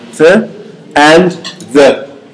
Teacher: The first one is that they are both of them interdental. It means that you use only your teeth, the upper teeth and the lower teeth together.